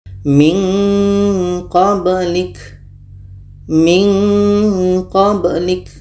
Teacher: jauh makhrajnya dari huruf nun maka kita baca minqblik Min qblik kenapa ada bunyi nga di situ karena makhraj qo ini jauh dari makhraj Nun tadi